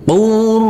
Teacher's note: huruf ro kita tekan kita tahan kita baca dengan tebal untuk setiap huruf-huruf yang bertasdid ini huruf rnya kita baca dengan